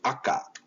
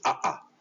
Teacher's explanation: The K would end up becoming a glottal stop. So the word for root in the older Polynesian languages, the oldest forms is aka.